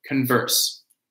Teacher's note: notice the verb has a stress at the beginning